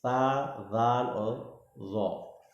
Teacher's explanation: زبان کی نوک اوپر کے دونوں دانتوں کی اندرونی کنارے سے ادا ہوتے ہیں